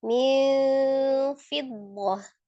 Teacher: Kemudian mil fiddah, nun sukun bertemu dengan huruf fa, ikfa, hakiki yang ausat ya, tengah-tengah. Jadi antara n dengan eng ya, tengah-tengah mendekati makhraj huruf fa.